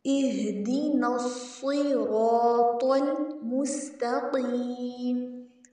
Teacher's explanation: مست میں سین کو سٹی کے ساتھ پڑھیں گے